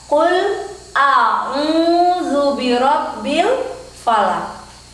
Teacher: Rabbi itu ditebalkan karena ada tanda tasydid. Falaq dipantulkan, memantul suara laq.